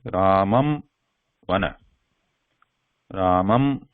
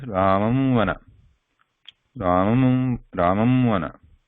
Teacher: So lips are completely closing. That is a ma sound.